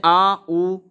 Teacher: पश्च स्वर जिन स्वरों के उच्चारण में जिव्या का पिछला भाग उत्था पित होता है या फिर सक्रिय रहता है उन्हें पश्च स्वर कहते हैं